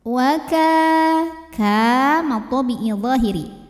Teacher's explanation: Karena ada alif yang didahului baris fathah, maka huruf kaf kita panjangkan 2 harokat.